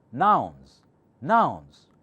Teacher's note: nouns is flat because got only one syllable nouns all is one syllable all is one vowel sound okay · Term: mono syllable